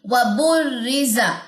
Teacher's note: را کی تشدید کے اندر کیا اس کا فارمولا ہم نے پڑھا تھا کہ تشدید کا مطلب ہے یہاں پہ دو را ہے، ایک جزم والا اور ایک زیر والا، ٹھیک ہے۔ اور با کی جو پیش ہے وہ اس جزم والے را کے ساتھ ملے گی، وَبُرِّزَ، یہ را باریک ہوگا، زا کے اندر سیٹی ہوگی، اور زا کی زبر آپ نے لمبی نہیں کرنی، لام کی جزم پہ آپ نے جھٹکا نہیں دینا، تل، یہ غلط ہو جائے گا، ٹھیک ہے۔